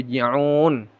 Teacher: Un panjangnya ee boleh dua empat atau enam harakat. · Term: mad arid lukun